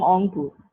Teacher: people from Rangpur say we are from Ongpur, right? The ra gets deleted. So that is again an example of apheresis.